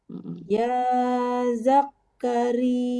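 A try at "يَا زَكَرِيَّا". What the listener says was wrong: Ya, kafnya tidak ada tasdid, jadi jangan ditahan. Tekannya dia-nya ya. Ya Zakaria gitu.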